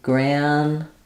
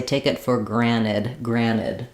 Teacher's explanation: But here in granted, we're going to either use a true T, so it'll sound like granted, where we let that T out, granted. Or sometimes when words have NT in American English in the middle, we will drop that T. So some people might say, take it for granted, granted.